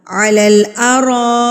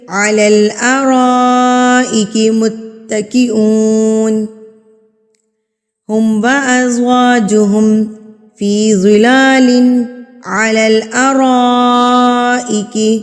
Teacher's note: را کے بعد الف ہے اور الف کے اوپر یہ جو مد بنی ہوئی ہے اس کو غور کیجئے. اس مد کو کہتے ہیں مد متصل، یعنی کہ بڑی مد جس کو ہم نے 4 حرکات کے برابر کھینچ کے پڑھنا ہوتا ہے